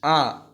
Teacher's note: आ जो है ये आपका विवृत स्वर है, जिसमें मुख जो होता है वो सबसे बड़ा खुलता है। तो ये आपका विवृत स्वर है, ना कि ये आपका औष्ठेय व्यंजन है या औष्ठेय वर्ण है।